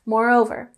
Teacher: moreover, and we have the primary emphasis on the second syllable